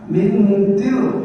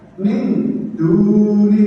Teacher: Selanjutnya yaitu ikhfa. Cara membacanya dengan samar dan mendengung.